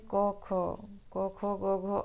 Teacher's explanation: जैसे क ख क ख गघ अंग तक इसको कंठ कंठ इसका उच्चारण स्थान कंठ होता है है ना कंठ मींस जो ये वाला हिस्सा होता है इसको